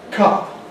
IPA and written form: kʌp (cup)